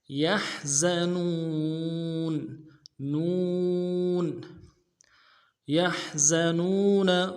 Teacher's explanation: حا کو گہرائی سے ادا کریں گے، زا کی سیٹی باریک ہوگی